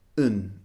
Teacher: And focus area number 4 is the pronunciation of and. Now, the pronunciation of and is very often reduced when we make lists of two things. And becomes un in this case.